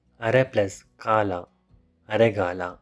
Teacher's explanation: Occurs when the second of two words that combine begins with an unvoiced plosive consonant. It will be changed to the voiced consonant of the same group. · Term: ādēśa Sandhi